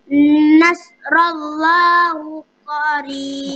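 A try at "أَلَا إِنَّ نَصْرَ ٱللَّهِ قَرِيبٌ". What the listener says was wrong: Bukan hu, qarib, hi qarib. Ala inna nasrallahi qarib. Inna nas, inna nas. Ala, mana ada hu? Tak ada hu pun.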